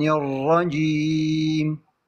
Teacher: الراء تحتاج الى قرع